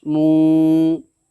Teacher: उल्टा पेश को एक अलिफ के बराबर खींच करके अदा करेंगे